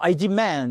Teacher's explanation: le verbe to demand en anglais avec une accentuation sur la seconde syllabe